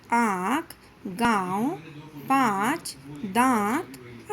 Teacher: इसे अनुनासिक कहते हैं इसे नाक और गले दोनों से बोला जाता है जैसे आंख गांव पांच दान आदि कि यह ध्वनि अंग्रेजी भाषा